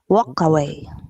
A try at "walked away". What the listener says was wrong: Walked. That is D, not walk away. Walked away. Walked away.